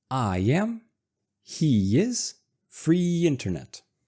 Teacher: we want to keep our voice going as we transition from E to E, which adds a kind of Y sound.